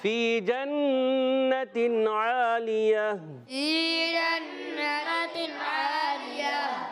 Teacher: وقف میں گول تا کو ہا سے بدل دیں گے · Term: وقف بالابدال